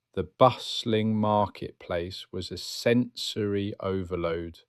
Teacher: you start to notice the stress on the first syllable of bustling and the way sensory flows into overload